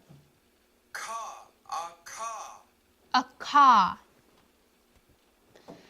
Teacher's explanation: So this next vowel sound, or consonant sound, is a K with a smaller H attached to the top, and it is described as a K sound with air, as in English keep